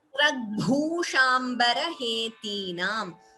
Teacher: Bhu is Mahaprana here.